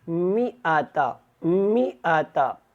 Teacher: اب یہاں پہ آگے الف ہے، کچھ لوگوں کو یہ لگتا ہے کہ یہ ما یا اس کو لمبا کرنا ہوگا، ایسے کوئی جو ہے نہیں پڑھنا اس کو۔ آپ نے یہاں پہ حمزہ کو جو ہے وہ لمبا نہیں کرنا، میم کے بعد حمزہ کو ادا کرنا ہے